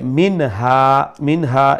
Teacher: নুন সাকিনরে এখানে আমরা স্পষ্ট করি ইজহার করি